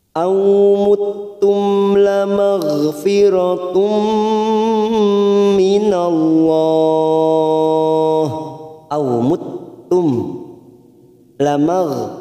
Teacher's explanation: Awmuttum mim sukun bertemu lam idhar safawi kita baca jelas tanpa mendengung.